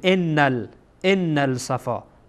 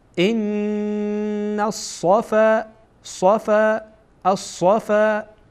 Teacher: نمیشه بگیم انل ان الصفا، این اشتباهه. ان الصفا، نون مستقیما با صاد وصل میشه